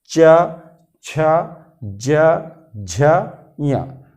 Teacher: क्योंकि जीभ और तालु के बीच, यानी जीभ और तालु दोनों मिलकर बाहर निकलने वाली हवा को बाधित करते हैं, रोकने का प्रयास करते हैं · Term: तालव्य वर्ग